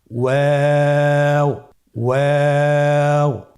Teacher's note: ওয়াও হরফটি উচ্চারণের ক্ষেত্রে বারিক হবে এবং 3 আলিফ টেনে পড়তে হবে।